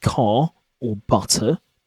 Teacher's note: In many British accents, the letter R sound at the end of a word like car or butter, you don't pronounce it. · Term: non-rhoticity